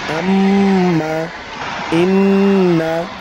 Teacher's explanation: নাকের বাঁশি হইতে গুন্নাহ পড়া হয়।